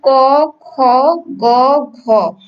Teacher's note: আমরা কিন্তু মানে এই 4টা বর্ণ ঠিক একই জায়গা থেকে উচ্চারিত হচ্ছে, এবং সেটা হচ্ছে জিহ্বা মূল বা কণ্ঠধ্বনি। · জিহ্বা মূল থেকে কিন্তু এই ক খ গ ঘ আমরা যখন উচ্চারণ করছি জিহ্বার মূল থেকে সেটা উচ্চারণ করছি, অথবা সেটাকে আমরা কণ্ঠধ্বনিও বলতে পারি।